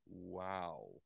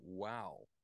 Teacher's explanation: of goes up and then down you know there's no sound my vocal cords start generating sound it reaches a peak loudness right in the middle where I go wow and then it comes down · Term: volume envelope